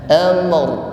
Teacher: Tutup dulu bibirnya baru diikuti takrir, bergetar dan tafkhim, tebal.